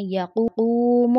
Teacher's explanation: واو ساکن اس سے پہلے پیش ایک الف کے برابر کھینچیں گے